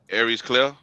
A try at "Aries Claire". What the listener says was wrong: So he just so he takes the R out of the second one, but he has it in the first one. He says the R in Aries. he doesn't vacate the R.